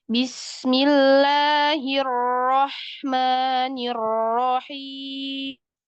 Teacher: Ro-nya ada dua. Samakan. Yang pertama dan yang akhir sama-sama tebal.